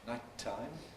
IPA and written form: ˈnaɪt̚taɪm (nighttime)